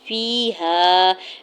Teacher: ہے، فیہا، یا ساکن سے پہلے فا کے نیچے زیر ہے، یا مدہ ہو رہا ہے، دو حرکت کھینچ کے ادا کریں گے ، الف پہلے ہا کے اوپر زبر ہے، الف مدہ ہو